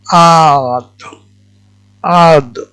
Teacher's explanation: জিহ্বার পার্শ্বভাগ এবং উপরের পাটি দাঁতের মাড়ি দেখানো হয়েছে। এই হরফটি উচ্চারণে জিহ্বার ডান পার্শ্বভাগকে ডান দিকে এবং বাম দিকের উপরের দাঁতের মাড়ির সাথে লাগিয়ে উচ্চারণ করতে হয় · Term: সাদ